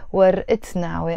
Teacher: You have to pronounce the تاء مربوطة, because ورقة is a feminine word that finishes with the تاء مربوطة. And once you have a noun, in this case which is ورقة, followed by another noun which is نعوي, you have to pronounce the تاء مربوطة. So that's why you say ورقة نعوي and we don't say ورقة نعوي.